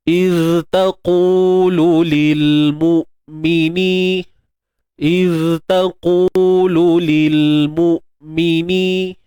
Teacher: sifat rakhawah pada zal ni perlu diutamakan. Apa itu rakhawah? Suara yang mengalir. · huruf zal ni kita kena, dari sudut makhraj, macam biasalah, hujung lidah kita keluarkan.